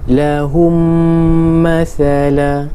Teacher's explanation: Memasukkan bunyi mim ke dalam mim yang berbaris serta dengung. Idgham mislain, bacaan dengung. · Idgham mislain, bacaan dengung. Mim mati bertemu dengan mim, bacaan dengung.